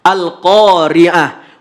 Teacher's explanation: Tapi walaupun dia huruf tamar butoh, maka ketika wakaf bunyi yang keluar adalah huruf H.